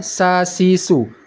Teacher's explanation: sedangkan huruf sa yang ini yang tidak ada titiknya cara bacanya sasisu hembusan anginnya keluar bebas makhrajnya yaitu pada ini bisa kita lihat ujung lidah di belakang